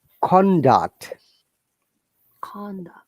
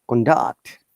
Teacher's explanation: if it is a noun the tone is from upper to down